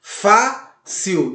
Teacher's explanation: A sua sílaba tônica está na penúltima sílaba. Toda vez que você vê a sílaba tônica na penúltima sílaba, ela é uma paroxítona.